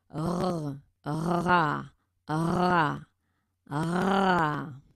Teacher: pour le R, ce qu'on appelle les R roulés, c'est plus au niveau de la vibration de la langue.